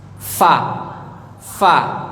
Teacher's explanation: gigi seri atas ujungnya tempelin di perut bibir nih fa fa jadi yang nempel gigi ujung Gigi sama perut bibir Fa bukan bibir sama bibir bukan bibir atas sama bibir bawah bukan pa pa enggak pada